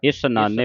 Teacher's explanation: ਇਸ ਨਾਨੇ ਸਸੇ ਦੇ ਨਾਲ ਉਚਾਰਨ ਕਰਨਾ ਛਾ ਨਹੀਂ ਬੋਲਣਾ ਸਸੇ ਦੇ ਪੈਰ ਵਿੱਚ ਬਿੰਦੀ ਲਾ ਕੇ ਉਚਾਰਨ ਨਹੀਂ ਕਰਨਾ।